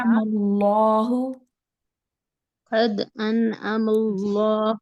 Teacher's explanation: آئین لمبا نہیں ہوگا، آئین کے اوپر صرف ایک زبر ہے